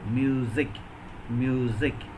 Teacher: we take another example music m-u-s-i-c the letter used is s but the sound is voiced sound